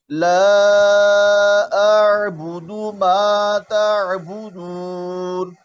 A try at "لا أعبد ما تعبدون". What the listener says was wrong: अभी भी हल्का हल्का कलकला पैदा हो रहा है। ला अअबुदु मा ताबुदून। ताबुदून।